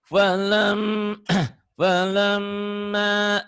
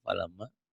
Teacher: bibir atas bibir bawah rapat tapi bindeng. Kayak bilang ember.